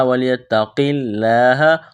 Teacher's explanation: لفظ اللہ کے نام سے پہلے زیر ہے، لفظ اللہ کے نام کو باریک کرنا ہے